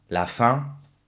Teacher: Daos cuenta que nunca pronuncio la N ni la M.